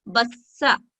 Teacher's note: جیسے تشدید کے ساتھ فتحہ، اب ہم اس کو बस्सा पढ़ेंगे और फतह को 1 सेकंड का वक्त देंगे और बा को सा से जोड़ते हुए और ऊपर फतह को पढ़ेंगे बस्सा। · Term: तशदीद